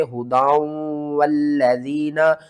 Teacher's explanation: ھذا ھدی والذین، یہاں پر ادغام مع الغنہ کریں گے، تنوین کے بعد آگے حروف یرملون میں سے واو آ رہا ہے